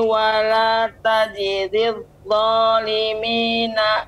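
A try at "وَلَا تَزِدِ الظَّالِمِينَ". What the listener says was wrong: Ya, zi lebih dijelaskan lagi, Ibu. Wala tazidil zalimi.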